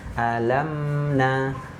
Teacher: Mim itu tempat keluarnya dari syafaten ya, dua bibir.